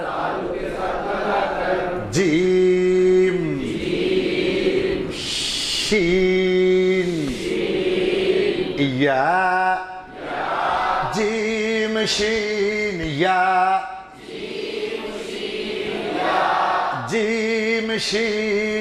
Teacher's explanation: 2 का उल्टा, 2 का उल्टा 6 है। 6 नंबर मखरज, ज़बान की बीच, ज़बान की बीच, उस बराबर ऊपर के, तालु के साथ लगा कर